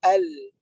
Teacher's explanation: Lam di sepanjang hujung tepi lidah tu.